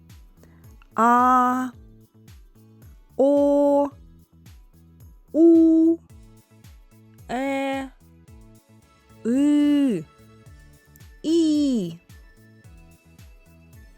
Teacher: чи була якась перешкода у ротику коли Ми співали ці звуки Ні не було повітря проходило Вільно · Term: голосні